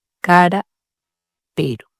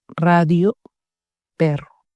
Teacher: Un petit R, comme dans cara, pero. on touche la langue une fois. R simple. Un R qui roule, comme dans radio, perro. La langue vibre plusieurs fois.